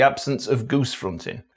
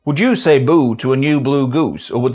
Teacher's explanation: Perhaps one of the strongest indicators is the absence of GOOSE fronting.